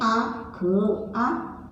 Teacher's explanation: अनुनासिक, मतलब नाक और मुंह दोनों से इसका उच्चारण होता है। जैसे आँख, आँख छोटा सा स्वर नाक से भी और मुंह दोनों से सुनाई देता है, वो होता है अनुनासिक।